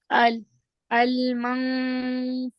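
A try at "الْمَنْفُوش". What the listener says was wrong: Very good, माशाअल्लाह।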